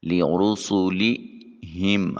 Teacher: سین حرف صفیریہ ہے، خصوصیت یہ ہے کہ ادائیگی کے وقت آواز میں سیٹی کی آواز آئے گی۔ لِرُسُلِهِمْ ہا کی ادائیگی کے وقت اقصائے حلق سے آواز نکالیں گے اور میم کے سکون کو کامل ادا کریں گے۔